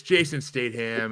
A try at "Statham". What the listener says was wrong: Statham. You pronounce the T. It's Statham.